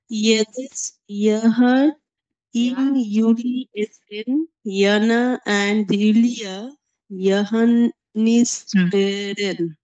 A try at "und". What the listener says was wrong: এখানে এন্ড হবে না, অ্যাকচুয়ালি উন্ড হবে, সরি। উন্ড ইউলিয়া ইয়োহানিস বেরেন।